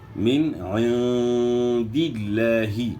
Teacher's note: لفظ اللہ کا لام موٹا نہیں ہوگا، پر نہیں ہوگا، بلکہ باریک آپ نے پڑھنا ہے